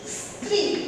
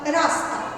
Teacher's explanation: যখন যুক্ত ব্যঞ্জন থাকবে সেক্ষেত্রে কিন্তু দন্ত স এর উচ্চারণটা স্পষ্টভাবে বোঝা যায়।